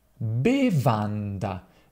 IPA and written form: beˈvanda (Bevanda)